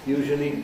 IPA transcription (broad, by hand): ˋjuːʒəli